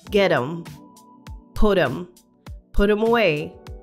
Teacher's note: So we will see that with get them and put them, the T at the end of get and the T at the end of put is pronounced as a flap T sound. So it sounds like a duh sound.